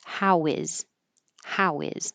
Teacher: you can connect the previous vowel to the H by getting rid of the H · your lips are rounded and when they move back they make a invisible W